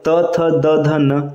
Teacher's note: त वर्ग का उच्चारण स्थान होता है दंत